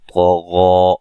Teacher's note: तो को मोटा, गैन को भी मोटा अदा करना है